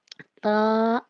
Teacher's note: تا الف زبر تا تو 2 حروف سے مل کے بنا ہے، یہ بھی 2 حرفی ہے۔ تا دیکھیں جب ہم تا ادا کرتے ہیں تو اپنی زبان کی نوک کو یعنی سامنے کے اوپر کے 2 دانتوں کی جڑ سے لگائیں گے تو تا ادا ہوگا · زبان کی نوک ثنایا علیہ یا سامنے کے 2 دانتوں کی جڑ سے لگے تو تا ادا ہوتا ہے